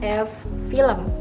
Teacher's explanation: konsonan yang dihasilkan dengan mempertemukan gigi atas dan bibir bawah. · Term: labiodental